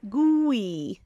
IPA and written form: ɡui (gooey)